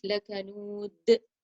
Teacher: And in لَكَنُودٍ, I do page the dal double dhammas, a dal sukun because of the full stop. Therefore, I have to do qalqala on it. · the 2 dals in these 2 verses had to be recited with qalqala just before the full stop because we changed them to a dal sukun.